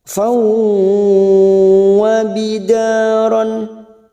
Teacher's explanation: Rafau ada fathah tanwin bertemu waw, idgham bi gunnah. Siap masuk ke huruf waw dan ditahan selama 3 harakat.